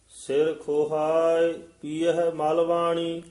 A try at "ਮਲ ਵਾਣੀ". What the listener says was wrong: ਜੀ, ਇਹ ਮਲਵਾਣੀ ਪਾਠ ਸੰਪਰਦਾ ਚ ਵੱਖਰਾ ਕਰਾਇਆ ਜਾਂਦਾ ਹੈ। ਮਲਵਾਣੀ ਨਹੀਂ ਕਹਿਣਾ। ਪੀਐ ਮਲ ਵਾਣੀ।